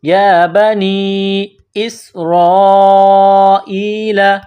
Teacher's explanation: یا بنی اسرائیل، حمزہ کو سین کے ساتھ پلس کرنا ہے، سین کو باریک کرنا ہے، سین میں سیٹی کی آواز پیدا کرنی ہے ، را کے اوپر زبر ہے تو را کو موٹا کرنا